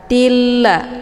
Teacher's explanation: Hukum bacaan idgham bila gunnah, tiada berdengung. · harokat tanwinnya dileburkan ke dalam huruf la dengan cara ditekan dan tidak perlu ditahan.